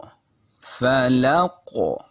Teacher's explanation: قاف کی آواز لوٹ کے آ رہی ہے، یعنی قلقلہ ہو رہا ہے